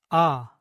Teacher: The biggest difference is that the Korean ah is pronounced slightly shorter than the English ah. There are also small differences in the position of the tongue and where the sound is made in the mouth.